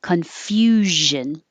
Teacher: confusion has a zh noise, and the zh noise is the same position as sh. So if it helps make the sh noise, put your tongue in the right position, you're pushing the right airflow, and make sound, make voice in your throat, and you'll hear zh.